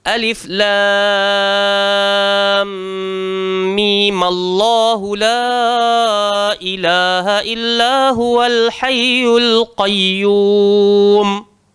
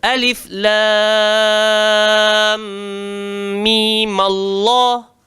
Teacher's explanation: dia dibaca 6 harakat ataupun qasar 2 harakat, di mana huruf mim yang bertanda sukun pada akhir nama tulisannya ditukar menjadi baris atas untuk melepaskan pertemuan 2 huruf bertanda sukun.